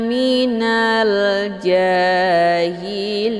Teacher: Kemudian ada 1 huruf lagi yaitu nun yang kita sukunkan dengan sebab diwaqaf atau juga disebut dengan sukun aridhi. Maka mad arid li sukunnya dibaca panjang, boleh 2, 4 sampai 6 harokah, harus konsisten dengan nafas.